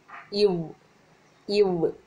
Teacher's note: மேல்வாய் பல்லை கீழ் உதடு பொருந்துவதால்